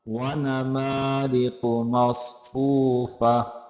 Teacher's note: क़ाफ़ को मोटा करके पढ़ेंगे